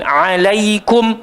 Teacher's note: huruf Ain keluar dekat tengah-tengah tekak jangan naik kat hidung